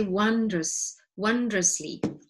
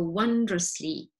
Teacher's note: Words that you can practice with me, wondrously, although it's a O, that is express, okay, with a, so it's an O, but you say wondrously, and the O is like a schwa